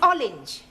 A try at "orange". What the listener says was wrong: You really must work at those R sounds.